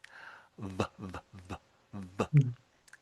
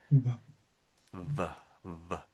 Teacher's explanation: And there's a sudden burst of air coming out. So, with my lower lip, I'm pressing up against my upper teeth.